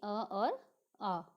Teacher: अगर हम इसको जिह्वा की ऊंचाई की दृष्टि से देखते हैं तो मुख विवर पूरा खुला हो, जीभ निश्चेष्ट पड़ी हो, उसको बोलते हैं विव्रत, यानी अ और आ।